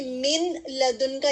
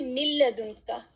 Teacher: من ہے پہلے اور اس کے بعد لام ہے، تو ہم اس میں من لدن کا نہیں پڑھتے، ہم اس کو پڑھتے ہیں مل لدن کا. ٹھیک ہے، اس میں ہم لام کو واضح کرتے ہیں اور نون جو ہے اس میں واضح نہیں ہوتا، نون کی آواز اس میں چھپ جاتی ہے، تو وہ اور اس میں ہم غنہ نہیں کرتے. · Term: ادغام بغیر غنہ